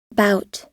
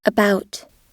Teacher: Bout, 네, 이 소리는 영어 단어 about에 나타나는 B 소리입니다. B 소리는 단어의 처음에 나타나든 유성음 사이에 나타나든 모두 B 소리로 들립니다. about, 즉, B 소리는 단어의 처음에 나타나든지 아니든지 혹은 유성음 사이에 나타나든지 상관없이 항상 B로 발음이 되는 것을 알 수 있습니다.